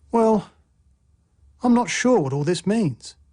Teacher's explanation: a fall rising tone expresses uncertainty